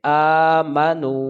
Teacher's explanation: میم کو جلدی پڑھیں گے، اور نو کو کھینچ کے پڑھیں گے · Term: واو مدہ